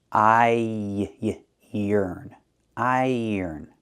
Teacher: But we have to link the vowels, so it's a little different. To link the two vowels, I and er, we have a yuh sound in the middle, like in yellow and yesterday. So, you hear I yuh yearn.